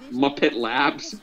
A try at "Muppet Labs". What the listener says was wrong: The way you said that, like, you place emphasis on, like, the weird part, like, Muppet Labs.